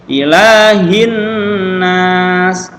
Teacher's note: Karena bacanya langsung tembus ke suara huruf nunnya. Alif lamnya enggak berbunyi, enggak ada tandanya ya. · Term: idgham syamsiyah